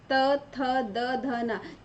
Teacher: इसी तरह से दंत यानी दांतों से ये त थ द ध न, जब हम इनको बोलते हैं, इनको उच्चारण करते हैं तो हमारी जीभ जो है दांतों को छूती है, स्पर्श करती है।